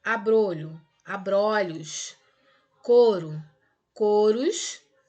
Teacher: Porque quando, por exemplo, utilizamos uma palavra no singular, o som normalmente é fechado. E aí, quando eu coloco no plural, esse som vocálico que foi fechado acaba se tornando aberto no plural.